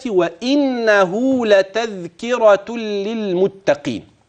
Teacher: الواو من الشفتين الهمز من الحلق اذا هذا يسمى تقارب ام تباعد ام تجانس التباعد لانهما متباعدان في المخرج